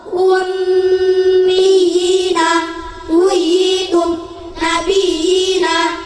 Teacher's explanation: Mad tamkin ya kasrah bertasdid bertemu ya sukun, panjangnya 1 alif atau 2 harokat.